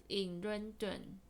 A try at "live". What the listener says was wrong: Very good, but it's not leave, it's live. They live. Not leave. You keep saying leave. And there is a word leave. But we need it to be live. You're saying leave. You are saying this word. You are saying this word, leave. This word is live.